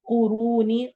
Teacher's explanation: قاف کو موٹا کرنا ہے، رو میں را کو موٹا کرنا ہے اور واو مدہ کرنی ہے